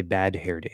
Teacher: I keep the H where I say bad hair day so you can have a voice sound and then an H